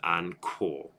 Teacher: The H sound carries up and makes that into an aspirated ko.